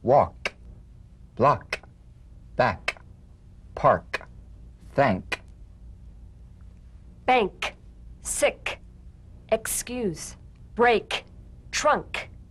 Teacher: the unvoiced tongue back plosive consonant · With the tongue in the G position, let the tongue spring away in the soft, unvoiced click of the K drum beat. Feel a crisp tap and a pulsation in the back of the tongue.